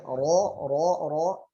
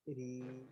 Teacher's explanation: Ra dalam keadaan mufakham atau ditebalkan, punggung lidah bagian belakang akan naik ke atas.